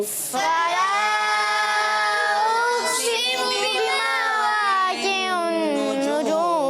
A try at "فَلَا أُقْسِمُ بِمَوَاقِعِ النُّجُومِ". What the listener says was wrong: بڑے جوش سے پڑھا, مگر درمیان میں آپ کی آواز ختم ہو جاتی